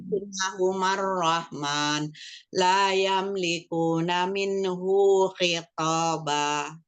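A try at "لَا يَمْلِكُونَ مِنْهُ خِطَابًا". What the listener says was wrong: Ya, hunya satu harokat minhu khitaba.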